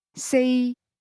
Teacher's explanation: four is pronounced with a mid-level tone